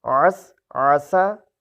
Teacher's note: عین کو وسط حلق سے ادا کیجئے، الف جیسا نہ پڑھیے، حمزہ جیسا نہ پڑھیے